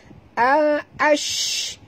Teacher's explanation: Kalau huruf shim ini, ya, sifat dia tafashi. Itu angin yang berhamburan keluar.